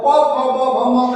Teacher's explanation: प फ ब का म का उच्चारण ओष्ठ से होता है। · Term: ओष्ठव्य